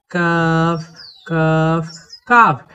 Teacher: কাফ অক্ষরকে জিহ্বার গোড়ার একটু উপর থেকে চিকন করে পড়তে হয়